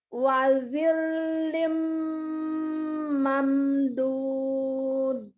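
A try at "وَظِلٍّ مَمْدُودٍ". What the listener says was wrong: Kol-kolahnya nggak kedengeran? Iya, itu namanya kol-kolah. Jadi mamdud. Nah, cuman di gerakan lidah aja ya, nggak boleh. Harus kedengeran. Kubro itu keras itu.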